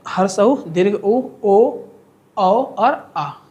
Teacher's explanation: वृत्त मुखी में होठ लगभग लगभग गोल होता है और ह्रस्व ऊ दीर्घ ऊ ओ औ और आ ये होता है।